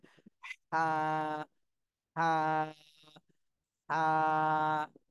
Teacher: গলার মধ্যখানে হালকা চাপ দিয়ে বাতাস বের করতে হবে।